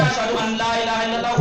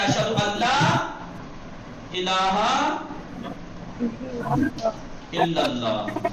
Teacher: نون ساکن کے بعد لام ہے ادغام بغیر غنہ کے ہے